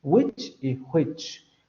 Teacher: para las variantes norteamericana, por ejemplo, estas dos palabras se pronuncian exactamente igual